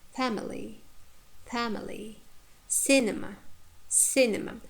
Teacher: But in the words like family, cinema, we have no long vowels in the second or short syllable. Therefore, the first syllable takes stress. Family, cinema.